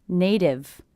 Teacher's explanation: i hear this T as a D because again it's a T coming between two vowel sounds will be a flap T sounds like a D like a